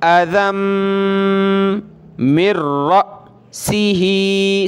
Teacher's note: हमज़ा साकिना को ईज़िली नहीं पढ़ना होता बल्कि झटका दे के पढ़ना होता है